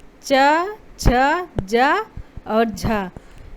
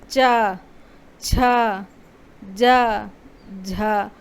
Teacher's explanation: यानी इनको बोलने में हल्का सा जिह्वा और तालु ये हल्के से टकराते हुए आपस में महसूस होंगे। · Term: स्पर्श संघर्षी